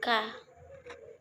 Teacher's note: bunyi yang dihasilkan oleh keterlibatan pangkal lidah dorsum dan langit-langit lunak velum caranya pangkalida sebagai artikulator menyentuh langit-langit lunak sebagai titik artikulasinya misalnya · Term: bunyi dorsovelar